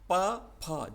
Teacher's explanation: तो हमने जो KTM DO ट्रिक जो याद करी थी दोस्तों, उसके अनुसार प फ जब अपन उच्चारण करते हैं तो हमारे दोनों होठ आपस में मिलते हैं है ना, एक दूसरे को टच करते हैं, तो ये ओष्ठ कहलाते हैं।